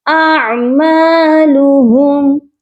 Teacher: اعمالهم، حمزہ اور عین اکٹھے ہیں، دونوں کی آواز بالکل کلیئر ہونی چاہیے۔ عین کی آواز حلق کے درمیان والے حصے سے آتی ہے۔